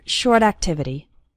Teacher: the words short and activity also kind of flow into each other